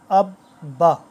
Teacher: یہ اب جس حرف پر آتا ہے وہ 2 دفعہ پڑھا جاتا ہے، جیسے حمزہ با زبر اب، با زبر با، اب با۔ اس کو پڑھنے کا یہ طریقہ ہے کہ اس کو ذرا سختی سے اور رک کر پڑھا جاتا ہے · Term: مشدد